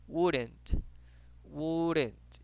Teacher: Acá también vemos una L, no la pronunciamos. Diríamos como wouldn't.